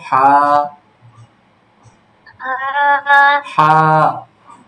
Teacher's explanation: চাপ দিয়ে বলবা, কণ্ঠনালীর মাঝে থেকে চাপ দিয়ে বলতে হবে, হা, কণ্ঠনালীর মধ্যখান হইতে, ঠিক আছে? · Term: বড় হা